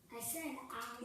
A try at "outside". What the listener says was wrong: Yeah, but if you don't enunciate that T loud enough, you won't write it. Outside.